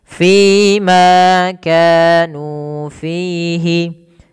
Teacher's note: semuanya mad thaii dan wajib dipanjangkan dua harakat dan bunyinya harus sama